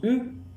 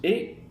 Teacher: La différence entre la voyelle E et la voyelle U, c'est que la voyelle U est une voyelle arrondie, tandis que la voyelle E est une voyelle étirée. Vous le sentez quand vous prononcez ces deux voyelles, quand je prononce E, mes lèvres sont étirées.